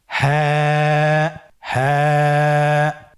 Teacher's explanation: হরফটি উচ্চারণের স্থান কণ্ঠনালীর শুরু হতে, অথবা আমরা যদি আরবিতে বলি হলকের শুরু হতে এই হরফটি উচ্চারিত হয়।